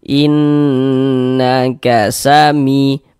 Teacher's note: inn-nya suaranya itu kita tahan, kita panjangkan sejenak. Nanya pendek ya. · in-nya yang kita tahan, kita gunnahkan.